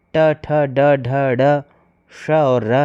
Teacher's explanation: मूर्धन्य का उच्चारण स्थान ट, ठ, ड, ढ, ड, श और र है।